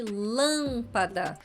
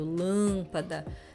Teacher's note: Mesma coisa, a pronúncia é lâmpada e não lâmpada. É uma pronúncia fechada e nasal, né? Por causa do M